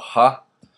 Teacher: the final consonant is just the glottal H which is the same as in English